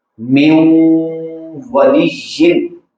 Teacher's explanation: नून मुदगम हो रहा है उसमें और उसमें गुन्ना भी हो रहा है